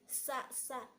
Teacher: Nah, kemudian huruf sa juga sama, ujung lidah ditekan ke gigi seri bagian bawah gitu. Sa dan ada hembusan udara yang keluar, hames kalau dalam bahasa tajwidnya